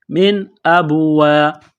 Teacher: وہاں غنہ نہیں کریں گے، آواز ناک میں نہیں چھپائیں گے، یہاں نون ساکن کے بعد حمزہ ہے، حروف حلقی ہے تو یہاں غنہ نہیں کریں گے ، من ابوا، حمزہ با زبر اب، یہاں قلقلہ کریں گے،